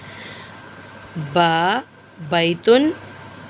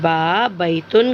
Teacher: और बच्चों, इसका मखरज होंठों का अंदर वाला हिस्सा, होंठों के अंदर वाले हिस्से यानी नर्म हिस्से को, गीले हिस्से को, तर हिस्से को मिलाकर जब हम छोड़ते हैं तो बा अदा होता है।